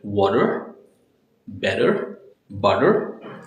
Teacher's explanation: Flap T is nothing but when your T has a sound of soft D